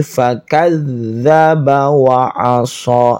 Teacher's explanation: ada zal di ujung lidah, ada tasydid